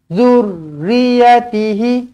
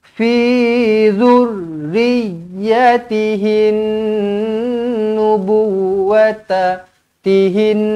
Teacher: Yang mana dekat sini kena dua-dua sabdu. Ra pun kena sabdu, ya pun kena sabdu lah. Kedua-duanya perlu ditekankan.